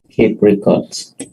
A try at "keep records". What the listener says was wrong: To keep records. To keep records. Bacanya records kalau itu kata benda. Kalau sebagai verb, record. Jadi saya dengar keep record. Sebagai verb, bacanya record. Kalau sebagai kata benda, to keep records. Records.